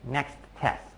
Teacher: I might have stopped at the end of next, but only for a very short period of time before going right back to the next T sound for test.